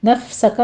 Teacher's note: नफ्सका में फा पर हमस होगा